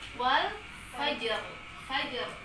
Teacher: Jadi si ja-nya itu kita qalqalahkan, kita getarkan keluar.